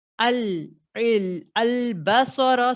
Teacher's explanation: सर heavy है, बा इज बारीक